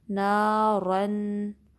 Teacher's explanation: نون پہ فتحہ ہے، آگے الف مدہ ہے، 2 کاؤنٹس لمبا کریں گے